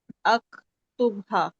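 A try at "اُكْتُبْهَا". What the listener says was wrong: अकतुब नहीं होता, उकतुब होता है। पेश है, उकतुब है ना। उकतुब होता है, अकतुब तो देखें बुरा ही लग रहा है, पढ़ते हुए बुरा लग रहा है।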